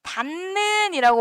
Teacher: 닫는 얘는 뒤에 있는 니은이 비음이기 때문에 요 디귿한테 영향을 줘가지고 닫는이라고 발음하잖아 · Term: 비음화